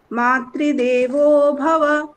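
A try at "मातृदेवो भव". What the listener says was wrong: এরকম বলতে হবে, মাতৃদেবো ভব, বোতে নিচে নামাতে হবে সব।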